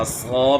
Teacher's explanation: صاد کو موٹا کرنا ہے، عصا پڑھنا ہے